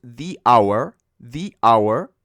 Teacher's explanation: la H pero es muda entonces empieza con un sonido de vocal por lo tanto tenemos que pronunciarlo di